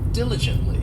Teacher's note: this adverb has four syllables and the stress is on that first syllable